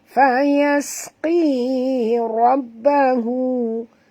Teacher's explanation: kena tebalkan ra, kerana ra bila di baris atas kena tebal ya